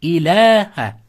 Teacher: Shunda bu mattabi bo'lib qoladi. Shunda ilaha deb ikki harakat lni cho'zamiz.